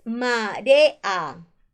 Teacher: Recuerda que las vocales abiertas es la A, la E y la O. Acá se está separando la E con la A, marea. Entonces en esta palabra que existe hiato, porque se están separando dos vocales abiertas.